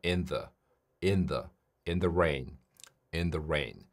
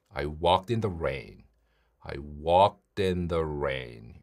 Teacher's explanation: 보통 이런 경우에는 in the 그냥 한 번에 이어서 발음합니다. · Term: 연음